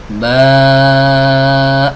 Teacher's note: Maka dia keluar dengan cara bergetarnya, ya, pita suara di tenggorokan. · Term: huruf mad